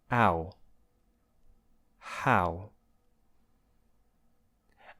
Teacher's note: So first, it begins with a consonant, an H, which you find in words like hello, and it's made with the vocal folds approximating, which really just means there's breathy air coming out. Next is the ow vowel, which you find in words like now, and that slides from the a position, like in the word cat, to the oo position.